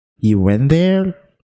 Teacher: Jadi mereka itu cuma main di intonasi yang naik saja.